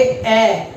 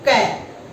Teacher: पहले बाधा उत्पन्न होती है, फिर वो बाधा हटती है और फिर अपने आप विस्फोट के रूप में वह शब्द निकलता है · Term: व्यंजन